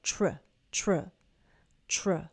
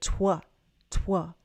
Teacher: Very different movements, because W starts inward and moves out.